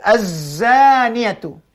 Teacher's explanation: Antara hujung gigi dia atas dan gigi bawah. Tetapi gigi renggang atas dengan bawah dia tak rapat. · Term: Zai